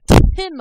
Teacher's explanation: i'm actually making my tongue touch the top roof of my mouth where my front teeth are